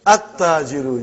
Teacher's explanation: You did not pronounce lam. Why you did not pronounce? Because it is sun letter.